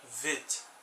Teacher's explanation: E quando tem uma regra aqui que quando tem um ponto embaixo da letra, a gente chama ele que ele muda, né, o som dessa palavra, ele fica fricativo, então ele fica o som de V